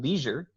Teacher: the next sounds we have are also palatal sounds but they are fricatives